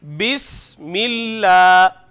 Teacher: کھڑی زبر کو ہم ایک الف کے برابر لمبا کرتے ہیں